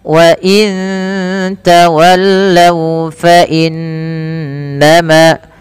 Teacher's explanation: inna ditahan suara bunyi n-nya sepanjang 2 harakat karena ia bacaan gunnah. Beberapa kesalahan yang terjadi tidak menahan gunnahnya, hanya lewat saja.